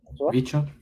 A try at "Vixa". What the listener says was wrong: Vixa. C'est un C français. Non, c'est pas un C français plutôt, c'est Vixa.